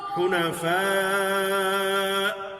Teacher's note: ابھی چونکہ ہم نے پڑھا ہے کہ حمزہ جب ساکن ہوتا ہے تو اس میں آواز رک جاتی ہے، تو یہاں حنفاء پر جب ہم نے وقف کیا ہے تو حمزہ کے ساکن ہونے پر آواز ہم نے روک دی ہے